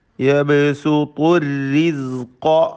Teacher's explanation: ഖാഫിനും തഫ്ഖീം കൊടുക്കുക, പൂർണ്ണമായ തഫ്ഖീം നൽകി തടിപ്പിച്ചോദണം.